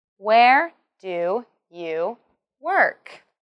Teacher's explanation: Remember to emphasize where and work. Also, this is a WH question, so it has a falling tone at the end.